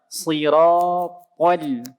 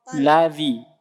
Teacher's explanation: To-nya tebal, lamnya tipis.